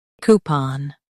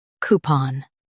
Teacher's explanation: coo pon coupon coo pon coupon In US, stress coo. In UK, stress pon.